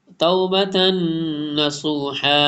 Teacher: تا کے اوپر ڈبل زبر ہے، اس کے بعد نون آ رہا، ادغام میں غنہ ہوگا